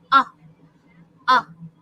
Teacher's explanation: So for the short vowel sound, our mouth is round, the tongue is placed at the back of the hard palate. So it's Notice the tongue is at the back of the soft palate. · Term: short vowel A